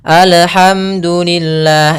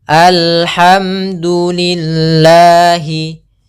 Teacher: Harusnya dia mengalir suara lamnya.